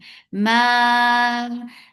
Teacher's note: the long vowel should not go into your nose